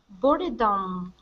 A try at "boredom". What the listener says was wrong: Now this word here is pronounced boredom. So this E we wouldn't pronounce. It's boredom.